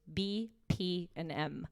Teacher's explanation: the sounds that happen at the front of your mouth bilabials b p and m because they happen right there you can provide an immediate visual